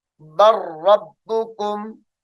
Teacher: यहां पर लाम को छोड़ दिया जाएगा।